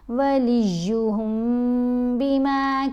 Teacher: ادا کیسے کریں گے؟ میم کے اوپر غنہ کیا جائے گا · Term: میم ساکن کا اخفا